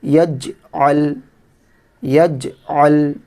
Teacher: جیم میں قلقلہ کرنا ہے، جیم قطب و جد میں سے ہے۔